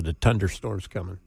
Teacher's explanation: Your th's are just a hard t sound.